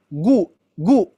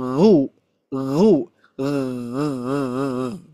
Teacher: huruf ghain ini mempunyai sifat isti'la, yaitu mengangkat pangkal lidah. Maka dia itu bunyinya tebal.